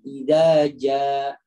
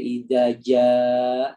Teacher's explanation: Ada alif setelahnya hamzah. Itu kan bertemu dengan hamzah. Maka cara bacanya dipanjangkan banget.